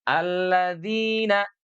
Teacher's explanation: Ujung lidah kita nempel ke gigi depan. Walaupun ada juga yang membolehkan digigit. · Alladzina, tidak li, tidak ikut terangkat permukaan lidah dan juga pangkal lidahnya. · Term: huruf dsa, huruf dzal